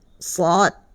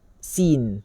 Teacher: Dia sama dengan sifat dia safir ni, sifat dia sama dengan sin dan juga zai. Tetapi sebutan sad ini jangan bertukar dengan sin, sebab sad dia tebal